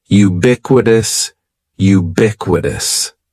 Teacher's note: ubiquitous has four syllables that first syllable is just like you're saying the letter U ubiquitous and the stress is going to be on that second · syllable is just like you're saying the letter U ubiquitous and the stress is going to be on that second syllable